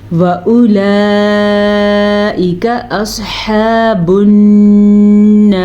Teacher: صاد کو پر پڑھیں گے، ہا کے مخرج کا خیال رکھیں گے، نون کا غنہ ادا کریں گے اور را کو پر پڑھیں گے